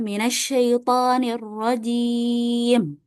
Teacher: Jadi kalau kita baca taawud ketika waqaf arrajim itu dibaca dengan mad arid lisukun yaitu afdalnya adalah empat harakat ya